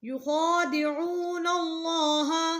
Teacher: لام موٹا کیونکہ پیچھے نون کے اوپر زبر ہے